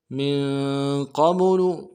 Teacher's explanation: क़ाफ को मोटा करेंगे, बा के ऊपर जज़म है तो क़लक़ला होगा